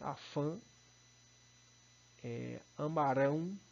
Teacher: Quando ele está na sílaba tônica, ele vai estar aí não por ser o acento gráfico, mas por indicar a nasalização da sílaba tônica, ou melhor, a vogal tônica é nasal